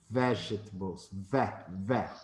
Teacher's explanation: The stress syllable is ve.